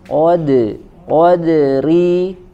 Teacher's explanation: qnya tebal kemudian dalnya tipis